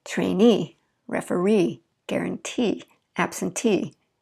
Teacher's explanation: you'll notice that the stress is at the very last when we added ee